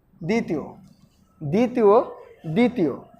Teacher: আমরা কখনোই দ্বিতীয় উচ্চারণ করতে গেলে ব এর উচ্চারণ করি না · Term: ব ফলা অনুচ্চারিত